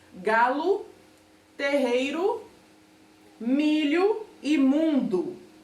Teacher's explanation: Que todas essas palavras terminam com a letra U, porque a gente não fala o som do O exatamente como ele é. A gente fala as palavras terminadas em O, a gente fala como se estivesse terminando em U.